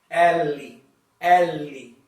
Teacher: In this case, it's quite similar to pronunciation L. Yeah, but in Portuguese, the L, when you pronounce it, the tongue touches the border of your teeth.